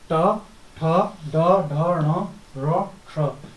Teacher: ट ठ ड ढ ण र ठ, इनका मूर्धा से उच्चारण करते हैं।